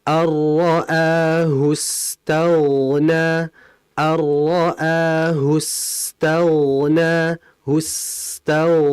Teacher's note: Sin mati dan sin itu juga berdesis serta dialirkan. Jadi harus dialirkan.